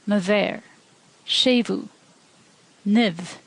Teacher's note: In a slender context, it sounds like V